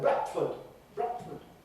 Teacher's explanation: they have a T or a glottal stop before the F in Bradford